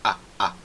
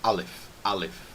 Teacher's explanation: Alf tem aquela parada é glotal na verdade que chama e então é uma parada na garganta